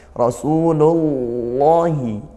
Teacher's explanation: lafaz Allahnya dibaca tebal karena lafaz Allah didahului harakat damah